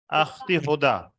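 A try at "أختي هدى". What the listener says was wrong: अख्ती नहीं होता, उख्ती होता है, अलिफ को पेश दें।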